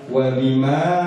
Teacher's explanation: Wa bima itu majais sehingga boleh panjang 4 harokat 5 harokat, boleh juga seperti matobi'i